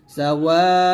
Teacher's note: তারপর সিন জবর সা, ওয়াও আলিফ জবর ওয়া, সাওয়া, হামজা দুই পেশ উন, সাওয়াউন, ওয়াতে চার টান দিবেন